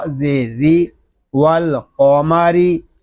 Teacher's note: را کو باریک پڑھیں گے کیونکہ را کے نیچے زیر آ گیا ہے